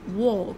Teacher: nó không phải là âm A đâu ạ, và nó cũng không phải âm Á gì đâu nhá. Nó là walk, nó là âm O dài